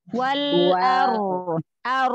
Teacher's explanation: angkat pangkal lidah ro tafhim ro sukun sebelumnya fathah tebal